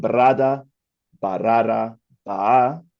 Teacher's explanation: a stage of copy vowel epenthesis coming in, and then the loss of intervocalic R